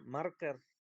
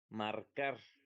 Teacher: entonces la sílaba tónica no es mar, sino sería car